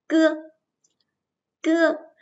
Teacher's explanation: Khi phát âm cưa thì cuống lưỡi nâng lên cao sát ngạc mềm, sau đó hạ nhanh cuống lưỡi xuống để luồng hơi bật mạnh ra bên ngoài. Cưa, cưa. Chúng ta nhớ là mình sẽ phải phát âm ở phía bên ngoài. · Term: âm cuống lưỡi